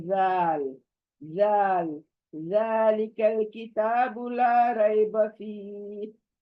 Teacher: जाल को वो जेड का झटका नहीं देना है कोई, एकदम नरमी से पढ़ना है।